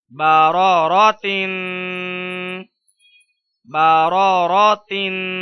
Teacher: غنہ ہوگا تنوین کی وجہ سے